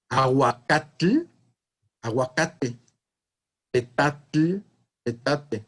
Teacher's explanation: El grupo final TL invariablemente dio TE.